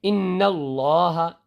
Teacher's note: تو آپ یہاں دیکھ سکتے ہیں کہ لفظ اللہ، یہ اللہ لکھا ہے لفظ، اب اس سے پہلے نون ہے اور اس نون کے اوپر زبر ہے، تو یہ جو اس نون کے اوپر زبر دکھ رہا ہے نا تشدید کے اوپر، اس وجہ سے اس اللہ کے لام کو پر کر کے پڑھا جائے گا، موٹا کر کے پڑھا جائے گا